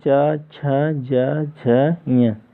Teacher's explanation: इन सभी वर्णों का उच्चारण स्थान तालु से होता है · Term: तालव्य वर्ण